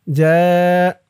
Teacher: চার আলিফ টান মধ্যে মুত্তাসিল